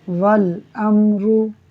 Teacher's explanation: را پر پیش ہے، اسے پر پڑھیں گے